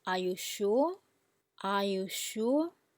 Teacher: your voice goes down from the low point to the bottom bit then goes back up to normal high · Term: third tone